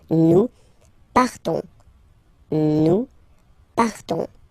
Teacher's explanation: So classic ending, O-N-S, you don't pronounce the S. You just have this on sound, nasal.